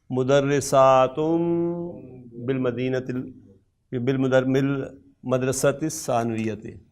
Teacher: نون ساکن ہو اور اس کے بعد با آ رہا ہو تو ہلکے سی میم کی آواز کے ساتھ آپ اس کو پڑھیں گے